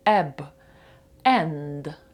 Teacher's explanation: буква е вона недовга вона коротка відкрита